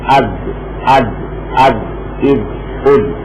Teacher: دال کی ادائیگی قوت اور شدت سے کریں گے، زبان کی نوک سختی سے لگے گی